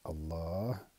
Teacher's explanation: on prononce le nom de majesté, qui est Allah, en allongeant le lam et en s'arrêtant sur le ha final par un soukoun. C'est-à-dire qu'on ne prononce pas la voyelle finale, si l'on s'arrête.